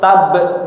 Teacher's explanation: Huruf ba qalqalah tapi jangan sampai suaranya terputus.